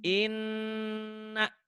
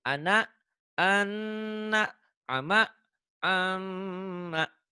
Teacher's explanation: Nun dan mim bertasydid itu dibacanya double, dengung ke hidung, ada gunanya, ada panjangnya. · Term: huruf gunnah